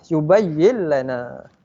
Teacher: Okey, perkataan kedua kita ada lam yang bersyaddah, berbaris atas. Cara bacaannya adalah kita memasukkan huruf lam ke dalam perkataan pertama. Jadinya bunyinya adalah yubayyin lana.